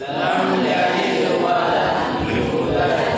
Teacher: Membunyikan qalqalah dalam keadaan wasal.